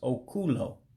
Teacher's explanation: when you put them together, make one word, you drop a vowel, so it becomes Okulo